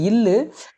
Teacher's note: இது மேல்வாய் பல்லின் அடியை நாக்கின் ஓரங்கள் தடித்து நெருங்குவதால் பிறக்கிறது